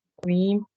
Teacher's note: تقویم میں قاف حرف قلقلہ ہے تو جی قلقلہ صغرا ہوگا, ٹھیک ہے. اور ساکن سے پہلے زیر ہے تو اس کو بھی جی 2 حرکت کھینچ.